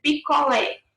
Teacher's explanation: você percebe que a última sílaba é a mais forte, a gente fala que essa palavra é oxítona